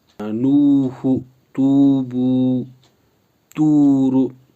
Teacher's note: वाव साकिन से पहले पेश हो तो वाव मदा होगा। वाव मदा को एक अलिफ के बराबर खींच के पढ़ेंगे